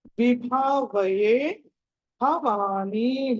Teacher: విభావయేలో భా మళ్ళీ మీకు మహాప్రాణము ఒత్తి పలకాలి, దీర్ఘంగా ఉంది దానికి